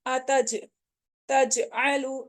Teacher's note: जीम के ऊपर हम कलकला करेंगे